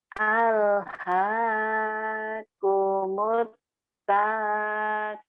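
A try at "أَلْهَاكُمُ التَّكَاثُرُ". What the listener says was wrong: Alhaakumut takatsur. Pendek. Kenapa jangan panjang? Kan ada yang panjangin.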